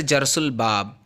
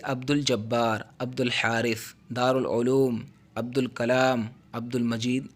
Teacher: الف کی آواز نہیں آ رہی نا، صرف لام کی آ رہی ہے